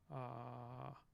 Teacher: So we have this low back vowel, and that is going to look something a little bit more like ah.